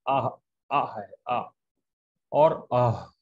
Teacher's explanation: یہ دونوں آخری حلق سے ادا ہوتے ہیں۔ تو یہ حلق کے آخری حصے سے ادا ہوتے ہیں، اس کا نام ہے حروف حلقی، حلق سے ادا ہونے والے حروف۔